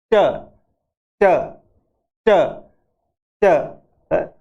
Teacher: ये प्लोसियन आवाज एकदम से बाहर निकलती है विस्फोट के साथ में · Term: प्लोसिव